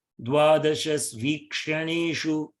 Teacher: shu and a becomes shva